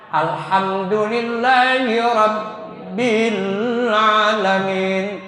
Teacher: Rabbi. Ba di sini ada dua, ba-nya sukun, yang kedua ba-nya ada baris fathah, maka harus ditahan. Alhamdulillahi rabbil alamin, dua ketukan.